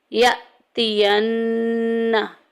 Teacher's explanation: हमज़ा साकिन पूरे कुरान पाक में जिधर भी आएगी हमने उसको झटका दे के पढ़ना है।